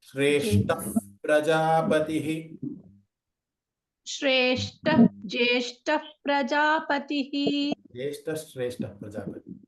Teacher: ಇಲ್ಲಿ ವಿಸರ್ಗ ಆದ್ಮೇಲೆ ಶಾ ಇದೆ, ಅಲ್ಲಿ ನಾವು ಜ್ಯೇಷ್ಠ ಶ್ರೇಷ್ಠ ಪ್ರಜಾಪತಿ. ಮತ್ತೆ ಇಲ್ಲೂ ಕೂಡ ವಿಸರ್ಗ ಆದ್ಮೇಲೆ ಪ್ರಜಾಪತಿ ಪಾ ಇರೋದ್ರಿಂದ ಫಕಾರ ಬರಬೇಕು.